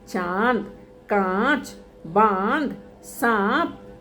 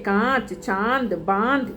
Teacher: इसका उच्चारण मुख और नाक दोनों से किया जाता है। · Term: अनुनासिक